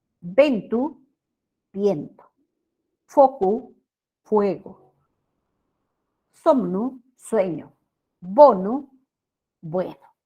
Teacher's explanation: Las vocales E y O breves y tónicas, tónicas significa que ahí recae la mayor fuerza de voz, pasaron a ser diptongos en castellano.